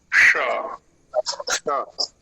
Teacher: जीव को नाली सी बनानी है थोड़ी सी और जहां से च का उच्चारण करते हैं उधर की ओर प्रयत्न होगा श श हा च पहले च बोलिए च के साथ श